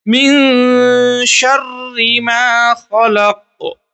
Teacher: مطلب ناک میں آواز کو چھپا کر پڑھیں گے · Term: اخفا